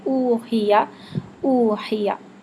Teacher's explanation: او کے لیے مکمل ہونٹ گول ہوں گے اور چونچ کی طرح ہونٹ مکمل آگے باہر آئیں گے